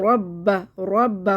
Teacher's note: रा को मोटा पढ़ेंगे, रा साकिन से पहले पेश है।